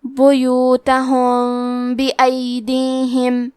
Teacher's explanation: با حروف الاخفاء الشفوی میں سے ہے تو ہم میم ساکن کو چھپاتے ہوئے اور غنہ کے ساتھ یہ حکم کو ادا کریں گے